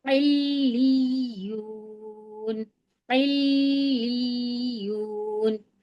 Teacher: دونوں بار سختی ہوگی اور دونوں حرف کو 2 بار پڑھنا ہے. پہلی والی تشدید کو ہم عین سے ملا کر پڑھیں گے، پھر دوسری والی تشدید کو ہم لام سے ملا کر پڑھیں گے، پھر یا والی تشدید کو ہم دوبارہ جب پڑھیں گے تو واو سے ملا کر پڑھیں گے کیونکہ واو پہ جزم آ رہا ہے.